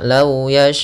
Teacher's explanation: Lau yasha'ullah, panjangkan 4 harokat baru baca u-nya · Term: mad wajib muttasil